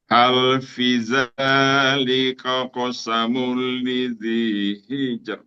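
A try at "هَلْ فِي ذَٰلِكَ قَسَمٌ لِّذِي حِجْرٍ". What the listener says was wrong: Belum. V-nya belum panjang. V-nya belum. Belum. Belum panjang, masih pendek.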